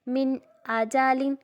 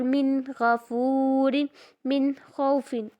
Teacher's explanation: یعنی ان سب میں گنہ نہیں کرنا، ناک میں آواز نہیں لے کے جانی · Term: اظہار